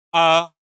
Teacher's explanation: ऐसा लग रहा है कि जीभ के बीच से आ रहा है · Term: मध्य स्वर